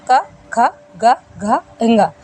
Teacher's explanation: इन सब का उच्चारण करते समय कंठ से ध्वनि निकलती है, इसलिए इन्हें कंठ व्यंजन कहा जाता है।